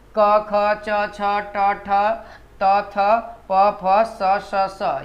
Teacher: क ख च छ ट ठ त थ प फ स ये सब जितने एलिमेंट है वो हमारा क्या है, अघोष वर्ण है